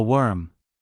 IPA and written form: wɜːrm (worm)